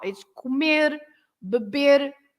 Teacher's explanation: the last sound is r, r, r. So that's why it seems that there is another e, but it's not.